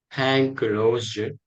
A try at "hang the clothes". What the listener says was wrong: Hang the clothes. Remember the TH, the clothes.